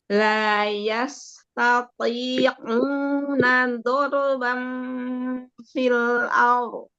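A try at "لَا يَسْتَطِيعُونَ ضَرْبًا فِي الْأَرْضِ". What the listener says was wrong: Masih terbagi ke hidung itu? La yastati'u au. Au. Ya, Ya, coba U-nya dulu. U-nya aja, matnya. Nah, tinggal tambahin aja ain di depannya. Matnya udah u, ya, paham ya? ya, jangan u ya.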